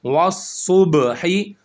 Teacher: صاد موٹا پڑھا جائے گا اور با پر کلکلا ہوگا